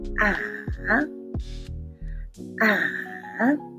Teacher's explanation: The third tone starts from a high pitch, then goes down and climbs up like ah, ah.